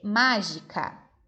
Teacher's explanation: eu tenho que pintar a sílaba má, a sílaba tônica, a sílaba que é pronunciada mais forte.